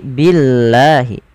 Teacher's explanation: Kemudian pada lafal billahi, lafal Allah bila didahului dengan huruf berharokat kasrah maka dibaca dengan tipis, bukan billah tapi billahi.